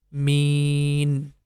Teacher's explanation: we are going to make the me sound for 4 counts. It becomes mean. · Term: mad letter